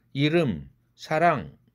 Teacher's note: 혀끝이 입천장을 탁 치면서 설탄시키면서 나오는 음이 바로 설탄음인 것이죠